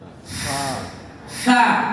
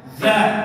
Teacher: Nah, Fa tidak getar, ya kan? Huruf Fa pita suaranya tidak getar. Huruf Z getar.